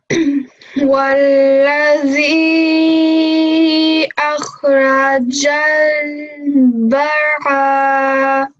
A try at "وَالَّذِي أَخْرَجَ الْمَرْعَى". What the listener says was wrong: So where's the ba? There's no ba. Why did you say bara? It's mar'a.